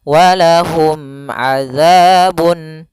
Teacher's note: Mim mati ketemu ain harus jelas yaitu izhar syafawi, mimnya tidak boleh ditahan.